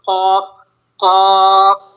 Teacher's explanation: قاف جو ہے یہ زبان کی جڑ اور تالو کے نرم حصے سے ادا ہوتا ہے